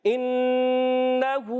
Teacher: نون مشدد آنے کی وجہ سے ایک الف کا غنہ کریں گے، کھڑی حرکات کو ایک الف کھینچ کر ادا کریں گے۔